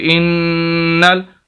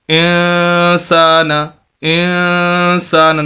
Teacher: نون کی آواز کلیئر نہیں، چھپا کر پڑھ رہے ہیں، اسے اخفا بولتے ہیں. اخفا کا معنی ہے چھپانا.